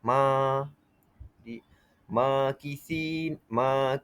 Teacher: Jadi ma itu alif selepas mim berbaris atas iaitu fathah. Jadi perlulah kita baca 2 harakat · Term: mad asli